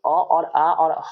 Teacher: ये जो अ और आ और ह आ रहा है ये आपका हो जाएगा कंठ से ही बोला जाएगा